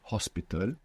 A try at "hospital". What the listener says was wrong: you thought of the H and a little kind of aspiration came there, which is fine, but to get the perfect accent